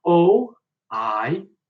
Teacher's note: you might have noticed that I'm not pronouncing the h when it's at the beginning of the word